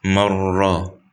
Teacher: The Idgham here is the Noon and the Ra, and the difference is, than the other ones, previous ayat, is that here Idgham without غنة. So the Ra is a Ra Mushaddada, means Ra Sakin, and then after it is Mutharrik. The Ya that is Sakin doesn't have غنة, and the Mutharrik doesn't have غنة.